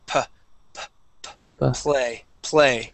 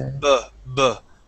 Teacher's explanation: the difference when we pronounce a p okay PP it's a it's a puff of air and we do not feel a vibration here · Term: the P sound